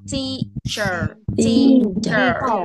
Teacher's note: Mà chữ tờ nó phải ra hơi ạ, phải ra âm ạ.